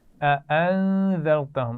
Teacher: अअन्ज़रतहुम, अच्छा दो हमज़ा हैं तो दोनों को वाज़े करना है